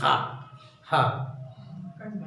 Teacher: और उसके बाद हा, हकार की ध्वनि निकलती है, हा, हा, ये कंठ से है बट उष्मा इसमें निकलता है, हा। तो ये जो है आपका उष्म व्यंजन है।